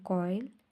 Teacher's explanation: The sound begins with one vowel and moves towards another. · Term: diphthong